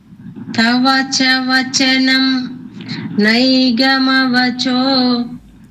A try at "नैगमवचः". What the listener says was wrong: Naigamavachaha. Cho will not come because we are not continuing with the next line continuously.